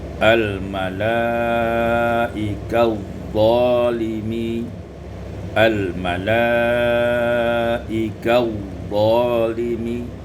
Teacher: Pada ayat yang ke-97 al-malaikatu zalimi, idgham ini diwasalkan, idgham ta fi dha, diidghamkan ta pada dha menjadi al-malaikatu zalimi